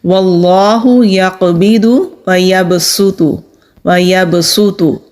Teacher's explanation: تو یہاں صاد نہیں پڑھا جائے گا بلکہ سین پڑھا جائے گا۔ تو سین باریک حروف میں سے ہے تو باریک پڑھیں گے